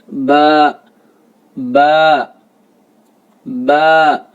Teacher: مخرج ہے دونوں ہونٹوں کا تری والا حصہ، یعنی دونوں ہونٹوں کا جو خشکی حصہ ہے اس کو چھوڑ کے جو تری والا حصہ ہے، یعنی اندر والے ہونٹوں کا ایک باہری حصہ ہوتا ہے اور اندرونی حصہ ہوتا ہے، ہونٹوں کا اندرونی حصہ ملا کر ادا کیا جاتا ہے۔